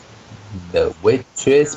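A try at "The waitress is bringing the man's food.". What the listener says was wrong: No, no, you didn't pronounce the is there.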